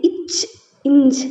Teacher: உங்களோட நாவின் இடைப்பகுதி நடு அன்னத்தின் இடைப்பகுதியில் பொருந்துவதால் பிறக்கின்றது